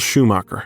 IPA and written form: ˈʃuˌmɑkər (Schumacher)